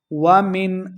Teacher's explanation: اظہار کا قاعدہ ہے یعنی بغیر غنہ کے پڑھنا ہے